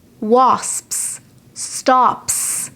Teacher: the final s will sound like a s if the sound before it is an unvoiced sound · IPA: /s/